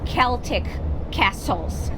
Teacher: Celtic castles so we don't say Celtic we say Celtic and Castle you don't pronounce the T